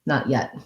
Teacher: in not yet we basically just use two stopped t's there so i don't say not yet i don't link because yeah